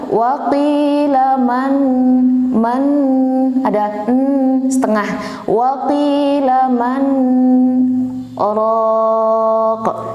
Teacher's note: Saktah berhenti 2 harokat dengan tanpa bernapas, kemudian ada niat untuk melanjutkan bacaan.